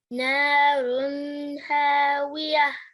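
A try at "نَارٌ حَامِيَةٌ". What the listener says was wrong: Okay, what's this letter? Yeah, so try that again, this verse again. You pronounced it as a waw. You said narun hawiyah. Okay, so make sure it's you pronounce it as a meme. Narun hamiyah.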